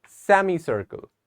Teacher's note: we have to stress on the SE at the start